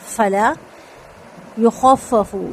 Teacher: یا کا پیش ہونٹ مکمل گول ، خفف فا کے اوپر یہاں پہ تشدید ہے، فا کے